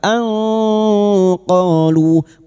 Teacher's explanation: Kita samarkan bunyi nun sukun dan mendengung selama tiga harakat. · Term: ikfa hakiki